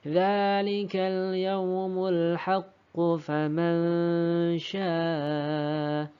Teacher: Kita tidak usah membacanya dengan qalqalah karena kita menyambungkannya.